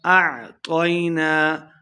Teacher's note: تو کو موٹا پڑھنا ہے، تو زبر یا طوئی لمبا بالکل نہیں کریں گے